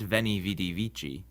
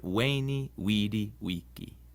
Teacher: The V in Latin is pronounced like a W sound.